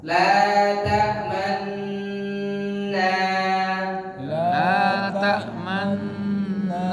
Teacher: Bacaan ismam. Nun tasdid dibaca mencucu di tengah dengung.